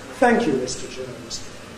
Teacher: a string of unaccented syllables after the nucleus on thank. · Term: tail